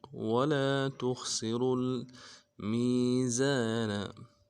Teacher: خا کو موٹا کریں گے۔ سین کی سیٹی باریک ہوگی، غا کو آگے لام کے ساتھ ملانا ہے اور را کو موٹا کرنا ہے۔